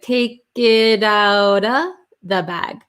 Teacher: flap t so it sounds like a d